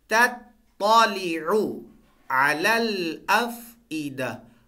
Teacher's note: پہلے والا تا بریک ہوگا، دوسرے والا تا موٹا پڑا جائے گا۔